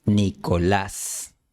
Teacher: El acento no va en la primera sílaba, sino en la última. Trata de gritar un poco la última sílaba. Debe tener un volumen más alto. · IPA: [ni.ko'las]